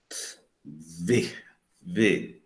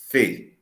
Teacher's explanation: a corrente expiratória, ela passa por uma abertura apertada. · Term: fricativas